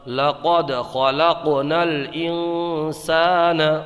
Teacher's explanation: قواعد دیکھ لیتے ہیں، یہاں پر دال میں قلقلہ ہوگا کیونکہ دال حروف قلقلہ میں سے ہے، اور ہم بتا چکے ہیں حروف قلقلہ 5 ہیں۔ قاف میں قلقلہ ہوگا کیونکہ قاف حروف قلقلہ میں سے ہے، اور جب حروف قلقلہ ساکن ہو تو ان میں قلقلہ خوب ظاہر ہوتا ہے۔ یہاں پر نون ساکن میں اخفا ہوگا کیونکہ نون ساکن کے بعد حروف اخفا میں سے سین آیا ہے۔